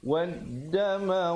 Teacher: Lamnya tidak dibunyikan, terus dimasukkan ke dalam dal yang bersabdu. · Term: alif lam syamsiah